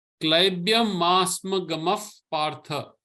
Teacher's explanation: So the visarga becomes a sound of fa. The visarga changes its sound. So it doesn't become like gama partha, gamaf partha.